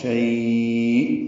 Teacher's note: شیء میں وقف کریں گے تو یائلین کے بعد حمزہ ساکن جھٹکے سے ادا ہوگی، شیء، اور اس کو لمبا کریں گے تو یہ لین عارض للسکون یعنی لین وقفی بن جائے گی.